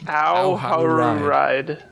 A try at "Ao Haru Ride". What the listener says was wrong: You really got to separate those last two R's. Ao Haru Ride.